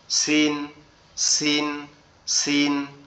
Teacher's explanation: সিন অক্ষরটাও একই জায়গা থেকে উচ্চারণ হবে, আমাদের জিহ্বার আগা সামনের নিচের দুই দাঁতের আগার সঙ্গে লেগে সিন সিন সিন।